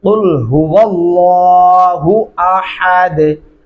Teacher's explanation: अहद हा नहीं पढ़ना, बारीक हा पढ़ेंगे